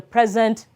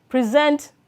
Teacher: And sometimes, some of these words could take the form of adjectives. The noun is stressed on the first syllable, while the verb is stressed on the second syllable.